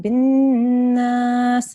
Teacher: You held on the noon, bin nas, and you made a Ghunnah sound there as well